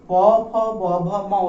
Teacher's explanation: প বর্গের ক্ষেত্রে আমরা দেখব কি না, প বর্গে দেখব যে জিহ্বা এখানে আর কোনো ভূমিকা নিচ্ছে না, এক্ষেত্রে ভূমিকা নিচ্ছে আমাদের ওষ্ঠ, অর্থাৎ প, ফ, ব, ভ, ম উচ্চারণ করার সময় উপরের ওষ্ঠকে নিচের ওষ্ঠ স্পর্শ করে, তাই এদেরকে বলা হয় ওষ্ঠধ্বনি